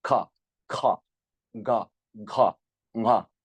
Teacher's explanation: we can see how the base of the tongue is lifted up and pressing the soft palate, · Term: velar